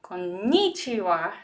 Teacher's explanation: American people will say konnichiwa, stressing ni